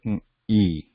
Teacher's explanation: when we say E, the vowel E, you will notice that this part of the tongue, the flat top part, is moving, is raised towards this 2 part.